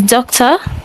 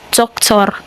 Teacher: in the Russian language the R is pronounced unlike the English where the R is silent. So I believe the English is doctor and in the Russian it's pronounced doctor.